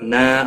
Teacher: نا الف مدہ ہے، ایک الف کے برابر کھینچ کر پڑھیں گے